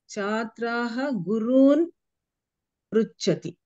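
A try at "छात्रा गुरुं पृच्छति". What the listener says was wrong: No, here chatra is strilinga ekavachanam. Chatra is don't pronounce visarga here. If you pronounce visarga, it will become bahuvachanam. So chatra gurum pruchati.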